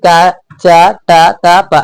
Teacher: हमारे यहाँ से कंठ, फिर हो गया तालु, फिर मुंह से निकल रहा है, फिर दांत में, और फिर होठ पर आ जा रहा है